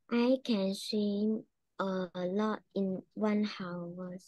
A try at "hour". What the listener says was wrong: In 1 hour. This one, H, no sound, silent H sound. You sound O-U-R, hour. You don't sound H. I can swim a lot in 1 hour. You don't say 1 hour. No H sound. It's, you sound O, sound O.